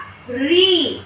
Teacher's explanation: जो हमारी जीवा रहती है वो तालू से लगकर आती है, इसीलिए इसका उच्चारण स्थान क्या है, मूर्धा।